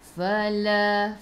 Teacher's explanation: gigi atas menyentuh perut bibir bawah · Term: Fa fi fu